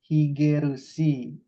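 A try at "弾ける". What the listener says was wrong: hike, tidak ada tentengnya. Hike,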